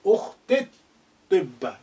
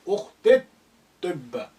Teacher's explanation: the lengthening e sound becomes slightly shortened.